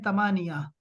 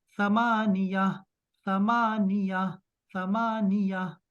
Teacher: آپ نے اس کو ثمانیہ, زبان کی نوک ہے نا اس کے اوپر, یہ جو اگلے والے 2 دانت ہیں اس کے نیچے لے کے آئیں